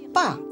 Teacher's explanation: And the 4th tone falls.